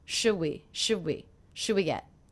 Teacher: one of the things I notice is I'm dropping the D sound